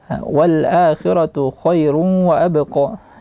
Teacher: Jangan lupa di khairun berjumpa dengan waw, itu digunnahkan, idgham bi gunnah. Khairun wa dibunyikan di hidung.